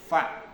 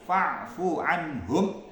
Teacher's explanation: fa ini keluar dari bibir bagian dalam bertemu dengan ujung gigi atas.